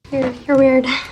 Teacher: The sentence has a flat intonation that emphasizes judgment in this insult.